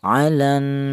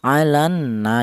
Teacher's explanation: Ghunah itu artinya ada suara berdengung. Adapun untuk panjangnya dengung ini adalah ada angka dua yaitu dua harakat atau dua ketukan.